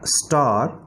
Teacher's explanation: अब स्टार में आर से पहले ए आ रहा है, तो यहाँ पे स्टार जो है ना वो आर जो है वो बहुत हल्का सा प्रोनाउंस होगा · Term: R controlled vowels